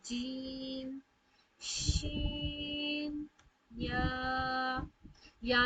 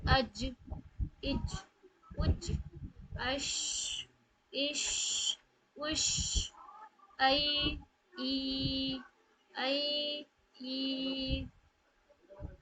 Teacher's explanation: गैप से आप देख सकते हैं कि जीम में जो गैप था वो कम था। शीन में थोड़ा गैप बढ़ गया तालू से और या में तो कुछ ज्यादा ही बढ़ गया। तो इस तरीके से जुबान की जो बीच का हिस्सा होता है वह ऊपर वाले जो उसके ताल जस्ट उसके अपोजिट वाला जो तालू होता है उसके करीब जाके अदा होती है।